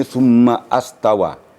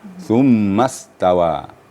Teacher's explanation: disambungkan dengan ayat dengan kalimat sebelumnya seperti Summa maka Alif nya gugur summastawa bukan astawa ya langsung masuk ke huruf berikutnya ya Az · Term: Hamzah wasal, hamzah wasal